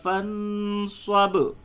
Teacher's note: اب یہ با ساکن ہے تو حالت وقف اور حالت وصل دونوں صورتوں میں فَانصَبْ ہی آپ اسے پڑھیں گے